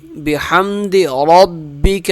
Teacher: را موٹا پڑھا جائے گا